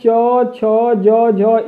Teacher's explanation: इनका उच्चारण तालु से होता है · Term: तालव्य ध्वनियाँ